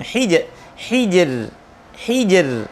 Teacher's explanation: huruf ra sukun dibaca tipis, jatuh setelah harokat kasrah. Berlaku hukum ini disebabkan illam takun min qabli harf isti'la, jika tidak ada huruf isti'la sebelumnya. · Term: tarkik